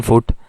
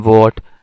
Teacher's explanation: F is actually a voiceless sound, while the v is actually the voiced sound.